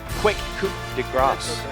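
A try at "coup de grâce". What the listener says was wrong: Don't pronounce the P, It's a silent P, everybody.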